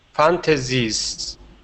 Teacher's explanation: the end letter, that S is a voiced S, and we say Z.